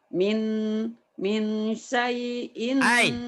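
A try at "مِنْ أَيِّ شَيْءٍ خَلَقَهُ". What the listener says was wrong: Ayyinya ketinggalan. Min syai'in.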